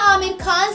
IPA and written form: ˈaːmɪr xaːn (Aamir Khan)